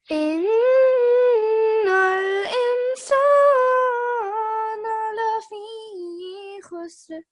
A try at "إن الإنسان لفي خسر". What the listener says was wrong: And try to have ikhfa here so you don't pronounce the noon.